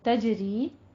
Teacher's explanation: تجری جاری ہیں، ری میں جیم کے اوپر قلقلہ کریں گے اور ری میں یا مد ادا کریں گے